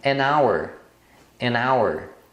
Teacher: hour é hora e o h é mudo então o primeiro som é um som de a